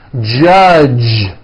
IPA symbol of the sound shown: dʒ